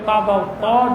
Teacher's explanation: জিব্বার আগার পেট তালুর সঙ্গে লাগিয়ে র। জিব্বার আগাটা উপরের দাঁতের গোড়ার সঙ্গে লাগিয়ে